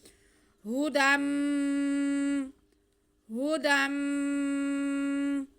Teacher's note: جو نون کی آواز ہے اس کو ہم گنہ کرتے ہوئے میم کے ساتھ ملائیں گے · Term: ادغام بالغنہ